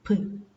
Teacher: So bilabial plosive, both lips completely block the airstream, then suddenly separates and there is a sudden release of air with an explosive noise